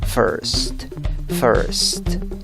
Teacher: No es una I, es schwa. No es ni una A, ni una E, ni una O.